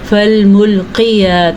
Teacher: فالملقیات ذکرا، موٹا قاف، ٹھیک ہے، ساتھ کھڑی زبر ہے۔ قاف کی حرکت کو آپ نے لمبا نہیں کرنا، بعض لوگ اس کو پڑھتے ہیں فالملقیات تو یہ غلط ہے۔